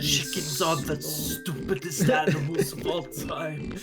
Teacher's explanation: Werner Herzog sounds, he talks like this, very breathy and very slow. The deep breath he doesn't do.